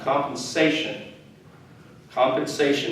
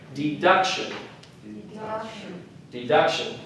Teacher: Again, one of those shun words again. The emphasis is on the syllable right before the shun.